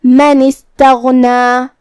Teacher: کلمت استغنا کی شروعات میں یہاں الف ہے، یہ حمزۃ وصل ہے، حمزۃ وصل کو ہمیں ظاہر نہیں کرنا ہے، نون کے بعد ہم سیدھا حرف السین کو پڑھیں گے